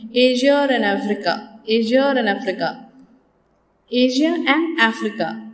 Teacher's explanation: For example, two words which end, a word which ends in a vowel and another word which begins in a vowel. If they appear together, then some people insert a R sound in between them. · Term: intrusive R